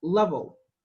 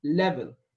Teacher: we have uh two l's the dark and the light and both of them both of them are different from the arabic l